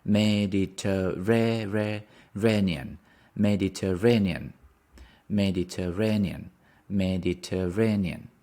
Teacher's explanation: Mediterranean. The stress is on the Mediterranean, on the fourth syllable.